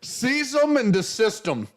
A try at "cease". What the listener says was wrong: It's not seize either. It's cease.